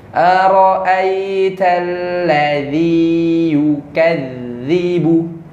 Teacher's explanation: Yukadzibu di zal itu rokhawah, suaranya dilepas dulu. Yukadzibu, jangan yukadzibu.